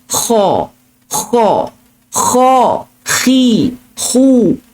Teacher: So kalau huruf kha dekat pangkal kerongkong.